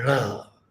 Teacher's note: our languages have a lot of retroflex sounds like ta, like ra. So we use these kinds of sounds also in our English. So that becomes one of the features of Indian English.